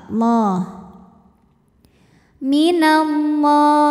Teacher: lam Jalal dibaca secara tafkhim sebab huruf sebelumnya berbaris fathah maka dibacanya tebal